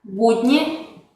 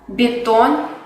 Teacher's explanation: en la palabra budni, ba, es un sonido duro, mientras que en la palabra betón, el sonido b es palatalizado